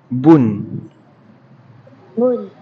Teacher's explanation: Un bun jangan panjang satu harakat sahaja.